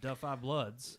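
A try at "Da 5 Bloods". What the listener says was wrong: You got to put Da and Five together.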